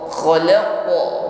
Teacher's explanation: jangan ragu-ragu untuk mengeluarkan bunyi yang memantul atau sifat qalqalah ya. Namun sekali lagi qalqalah atau bunyi pantulan pada huruf qaf di sini tebal ya.